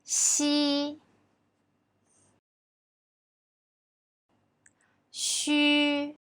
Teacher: When sh is pronounced, the surface of the tongue approaches the hard palate without reaching it, leaving a gap in between